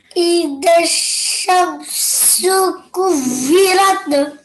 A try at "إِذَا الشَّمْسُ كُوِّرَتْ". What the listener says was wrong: But try not to give a jerking sound here, okay? It's just a normal tha. It's not one of your kalkala letters, yes?